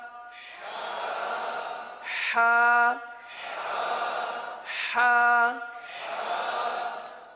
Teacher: اب اس حرف کا مخرج کیا ہے؟ حلق کا درمیان، وسط حلق